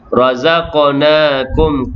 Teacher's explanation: qaf yang sukun qalqalah surah berdetak kecil